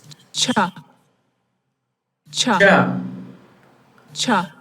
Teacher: the blade of the tongue is not touching the alveolar ridge, but the post-alveolar ridge. Cha. So here you have alveolar ridge, post-alveolar, hard palate, and soft palate. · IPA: /ʧ/